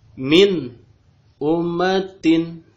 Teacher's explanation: Jadi si nunnya dibaca jelas, an, gitu ya, tanpa ditahan. Jadi cukup dibaca biasa saja, min ummatin, dibaca jelas, begitu ya. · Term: idhar